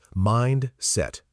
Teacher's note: 2 clear syllables, stress on the first, not mindset.